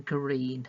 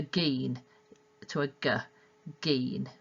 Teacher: In this case, our example is green, so we've got a gr, green, and a child might reduce that consonant cluster, the gr, to geen, to a g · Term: cluster reduction